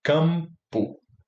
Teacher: E ele vai ser M porque essa próxima consoante, o P, é bilabial.